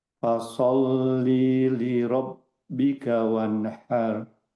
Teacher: Di sini kan la-nya tidak panjang, jadi temponya langsung cepat ke li yang kedua.